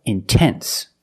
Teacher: after NT then you have to pronounce the T example intense I put the stress after the N so I have to pronounce a t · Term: pure T